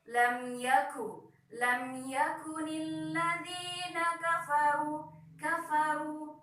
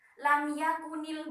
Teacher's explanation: Nah, jadi kafnya itu, kaf termasuk huruf hamas. Nah, jadi cara membacanya harus ada udara yang keluar dari k